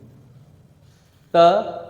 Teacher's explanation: अब देखो दांतों को जीभ टच कर गया